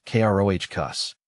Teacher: It's pronounced crocus, with a short O sound and emphasis on the first syllable.